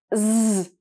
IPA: z